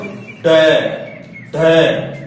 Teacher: तो इनमें होता क्या है, आप उत्क्षेपित व्यंजन है उनका उच्चारण करते हो तो आप पहले आपकी जीवा आगे से मुड़ती है, तालु की तरफ जाती है, आगे से मुड़कर फिर ध्वनि को धक्का देती है